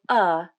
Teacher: the jaw drops to a mid-level opening not fully open and not fully closed the tongue is also at a mid level in the mouth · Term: UH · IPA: /ʌ/